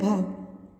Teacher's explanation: यह हिंदी की महाप्राण सघोष स्पर्श ओष्ठ ध्वनि है।